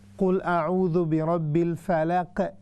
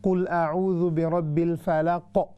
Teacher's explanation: ऊपर की तरफ उसकी आवाज़ उठेगी, तब जाके ये कलकला भारी होगा, हैवी